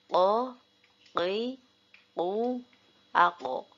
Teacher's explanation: Huruf qaf ketika ketika sukun harus dibaca mantul dan tidak keluar angin.